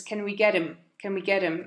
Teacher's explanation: he takes the H off him as we normally do in fast spoken English